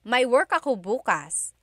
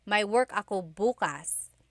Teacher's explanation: If you say bukas, emphasis is on the first syllable. that means tomorrow.